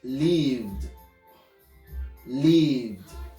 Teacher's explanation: the D is not a separate syllable. It's meshed together.